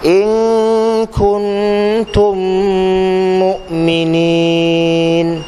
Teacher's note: Mim mati bertemu dengan mim. Dengungnya sama. 2 harakat. Idgham mislain. Jadi dengungnya sama juga. · Dengung bunyi mim tu 2 harakat sama juga.